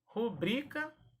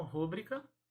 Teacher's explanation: Rubrica, paroxítona e não rúbrica.